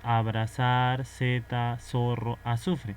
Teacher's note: nosotros pronunciamos este sonido como si fuese la s